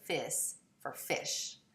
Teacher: Depalatalization, an alveolar fricative for a palatal fricative